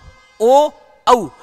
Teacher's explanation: कंठोष्ठ, कंठ प्लस ओष्ठ, कंठ प्लस ओष्ठ, इन दोनों से मिलकर के ओ और औ